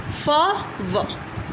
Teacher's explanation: लेबियोडेंटल्स में हमारे दो कॉन्सोनेंट्स आते हैं फ एंड व, produce by touching the bottom lip to the upper teeth